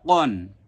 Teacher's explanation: এটার মাখরাজ আমরা কি শিখিয়েছিলাম, জিহিবার গোড়া ছন্দ আকারে আমরা শিখাই অনেক সময়। জিহিবার গোড়া তার বরাবর উপরের তালুর সঙ্গে লাগিয়ে এই হরফটি উচ্চারণ হয়। তাহলে কন। পরেরটা কান, কাপ দুই জবর কান, লাম দুই জবর লান, মিম দুই জবর মান, নুন দুই জবর নান, ওয়াও দুই জবর ওয়ান, হা দুই জবর হান, হামজা দুই জবর আন, ইয়া দুই জবর ইয়ান। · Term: কফ